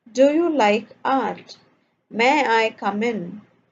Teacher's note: requires the answer yes or no and spoken with the rising intonation